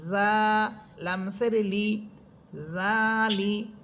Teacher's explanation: জিহ্বার আগা সামনের সামনের উপরে দুই দাঁতের আগার সাথে লাগবে